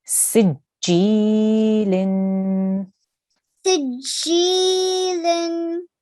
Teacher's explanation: You need to make sure you elongate for 2 seconds because we have a ya madda here